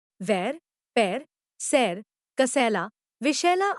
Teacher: यह अर्ध विवृत ह्रस्व अग्र स्वर है